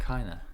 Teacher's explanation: we cancel this D, no D here, and of, there is no F